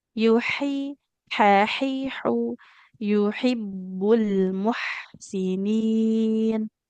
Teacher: ada huruf ha yang makhrajnya di tengah tenggorok